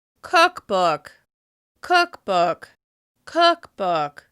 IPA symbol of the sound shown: ʊ